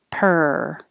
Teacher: any vowel at all so it doesn't matter how it's spelled it's the tongue curled back in the r position and making noise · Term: er sound